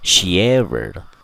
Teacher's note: Rule yang keempat, jika suatu kata berakhiran dengan suara I dan kata setelahnya diawali huruf vowel, maka kata tersebut bisa kita gabungkan bunyinya dengan cara menyisipkan huruf Y di antara bunyi dari dua kata tersebut